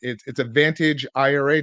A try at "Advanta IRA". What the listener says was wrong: It's Advanta, yeah. No GE, but yeah, Advanta IRA.